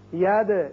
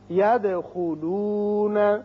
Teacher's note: دال ساکن ہے جو کہ حروف قلقلہ میں سے ہے، اس کی صفت قلقلہ ادا کریں گے.